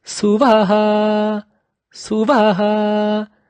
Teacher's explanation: That Vaha at the ending is brought at a high level, high pitch.